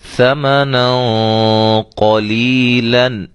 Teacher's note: یہاں قاف موٹے حروف میں سے ہے، لہذا یہاں ہم تنوین کے بعد موٹا غنہ کریں گے۔